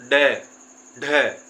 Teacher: ऊपर फेंकने के कारण जिस प्रकार हमारी जीभ ऊपर जाती है, इसी उच्चारण के कारण इन्हें उत्क्षिप्त व्यंजन कहा गया है · एकदम एक झटका सा लगता है दोस्तों, इसी झटके के कारण इन्हें उत्क्षिप्त व्यंजन कहते हैं